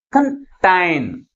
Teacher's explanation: కంటైన్ అంటే second సిలబల్ని first syllable కంటే ఎక్కువ ఫోర్స్గా పలుకుతున్నాం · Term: ప్రైమరీ స్ట్రెస్